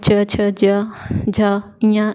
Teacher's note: इनका उच्चारण स्थान जो होता है वो तालव्य होता है